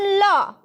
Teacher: গ্রহণ করি প্লাস ত্যাগ করি তাইতো তো সেই যে শ্বাস বায়ুটা সেটা যখন ল এই বর্ণটা উচ্চারণ করবে তো জীভের দুই সাইড দিয়ে কিন্তু শ্বাসটা বেরিয়ে আসছে ঠিক আছে বা নিঃশ্বাসটা বেরিয়ে আসছে সেই জন্য এদেরকে বলা হচ্ছে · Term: পার্শ্বিক ব্যঞ্জন ধ্বনি